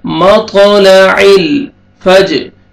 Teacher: عین کو اپنے مخرج سے ادا کر کے لام کے ساتھ ملانا ہے اور لام کو ہلانا نہیں ہے